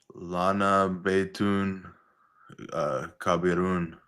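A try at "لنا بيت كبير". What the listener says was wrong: Kabirun. Make this long. Kabirun. Lana Beitun Kabirun. Because it's a long vowel.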